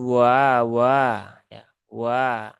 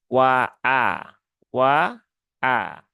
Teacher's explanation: hamzahnya bukan separuh maka tidak boleh dibaca dengan wa tetapi harus dijelaskan ya ditahkikkan menjadi wa a wa a ee setelah itu Kaf eah Kaf